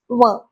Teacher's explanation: व म्हणताना नकळतपणे ओट आणि दाताचा उपयोग होतो व हे ओट असे दाताला लागतात व म्हणा व आहे ना